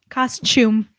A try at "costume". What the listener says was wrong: Costume. It's a T.